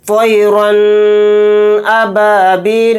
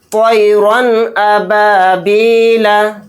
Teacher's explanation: یعنی رن، ناک میں بہت دیر آواز کو روک لیا، غنہ کر دیا، تو یہ غلط ہے، اس آواز سے بچنا ہے، اس کو صحیح اس طرح سے جلد پڑھنا ہے، طیرن ابابیلا۔